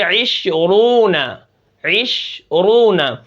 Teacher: اب را کے اوپر اگر پیش آئے گی تو پھر کیا ہوگا؟ را موٹی پڑھی جائے گی